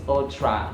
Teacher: notice the schwas on the first and second syllables